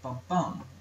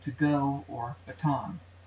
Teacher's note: am one of the simplest feet has the pattern bum bum one unstressed syllable then a stressed one